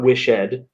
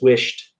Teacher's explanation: you say wished um it almost you almost pronounce the d like a t uh the e d you don't pronounce it ed it's not